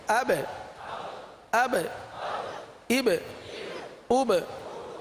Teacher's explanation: یہ جتنے بھی حروف ساکین ہو تو ان میں قلقلہ ہوتا ہے, تو با میں قلقلہ کریں گے.